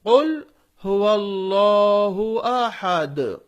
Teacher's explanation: اللہ کے لام کو ہم موٹا کیوں پڑھ رہے ہیں؟ اس لیے کہ اس سے پہلے زبر ہے